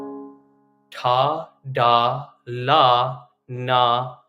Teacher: we've got consonants that come from the tip of the tongue